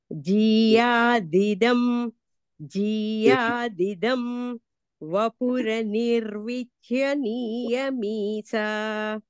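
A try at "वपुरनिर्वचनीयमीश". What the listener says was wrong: వపురనిర్వచనీయమీశ. అనిర్వచనీయ మీష. అంటే వపుహు అని పదం ఉంటుంది, తర్వాత అనిర్వచనీయం అని ఉంటుంది. ఆ రెంటిని కలిపితే వపురనిర్వచనీయం అని అవుతుంది అనమాట. అనిర్వచనీయాన్ని విడిగా చెప్పకూడదు, అలాగా కలిపి చెప్పేయాలి.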